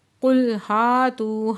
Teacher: تو پہ واو مدہ دو حرکت کھینچ کے پڑھیں گے